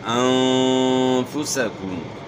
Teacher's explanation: نون ساکن کے بعد اخفا کے 15 حروف میں سے فا ہے، تو یہاں اخفا کے ساتھ آپ نے غنہ کرنا ہے